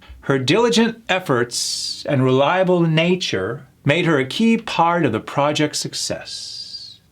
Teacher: How I started high and I work my way down, which is usually the American tonation of structured sentences. It starts high and it works its way down.